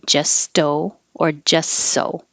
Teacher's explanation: don't release the t just okay